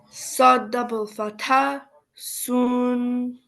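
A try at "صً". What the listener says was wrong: No, Saad is without dot.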